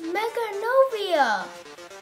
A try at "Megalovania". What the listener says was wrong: It's Megalovania. It's an L, there's no N.